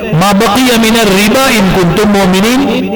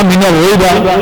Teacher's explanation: راہ مشدد مکسور ہے، زیر والی ہے، باریک ہونی چاہیے اور باریک پڑھنی چاہیے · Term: راہ باریک